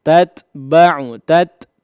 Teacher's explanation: ta yang kedua dikeluarkan ya, dijelaskan